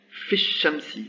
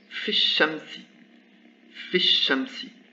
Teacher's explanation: le lam de l'article disparaît comme la voyelle